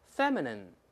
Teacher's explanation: 注意这个▁ine，▁这不是发▁i▁了，发▁n ，▁也不是发▁feminine，▁不是▁in▁哦，后面发▁n▁不是▁in，▁不要按汉语拼音读啊，在里面▁feminine▁叫做女人气的。当然这个词是褒义词是贬义词呢？咱就看修饰什么人了。如果修饰一个女孩子，那当然是褒义词了，充满了女人味的，有女性魅力的，让男人神魂颠倒的，可以。那如果他指男人呢，那就贬义词了，娘娘腔呢，这可说伪娘那种的，有点这流行的词，不知道 说的对不对啊？就这种有点娘娘腔的，可以用它。但